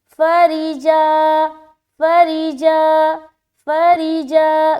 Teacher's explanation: रा को बारीक और जीम अलिफ ज़बर जा वहाँ पर खींचना है